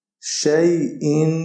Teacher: شین یا زبر شی، حمزہ دو زیر ان، شی ان۔ آخر میں ہم نے غنہ کرنا ہے کیونکہ تنوین ہے ہمارے پاس۔